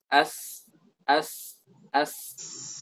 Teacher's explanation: Ketika kita ucapkan as, itu posisi lidah itu seperti dekat dengan permukaan dalam gigi seri bawah. As. Nah, keluarlah suara dari sana, dari lidah ini. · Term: sad, sin, zai